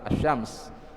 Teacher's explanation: lam yang diidghamkan ke huruf setelahnya. Maka begitu ada lam yang diidghamkan ke huruf setelahnya, maka namakanlah dengan syamsiyah.